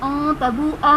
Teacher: مَلَئِهِ أَن تَبُوءَ میں نون ساکن کے بعد حروف اخفا میں سے تا آ رہا ہے، یہاں پر اخفا کریں گے، یعنی غنہ کر کے پڑھیں گے